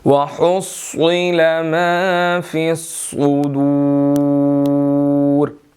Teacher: حُصِّلَ کے اندر صاد موٹا ہے، سین نہیں پڑھنا، اگر ہم اس کو باریک پڑھیں گے تو یہ سین بن جائے گا، اور اسی طرح ما فی الصدور نہیں پڑھنا، سین نہیں پڑھنا، ما فی الصدور صاد پڑھنا ہے ہم نے یہاں پر۔